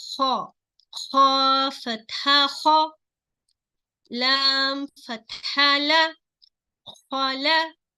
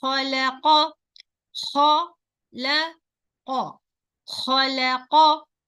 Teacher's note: You see here, kha, kha fatha kha, lam fatha la, khala. Okay, don't make this lam heavy because of both side is heavy. Qa fatha qa, khalaqa, khalaqa, khalaqa. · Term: light letter